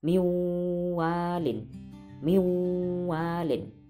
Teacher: nun mati bertemu wawu, dibaca idgham bi gunnah, memasukkan, nunnya tidak usah dibaca, langsung ke wawu.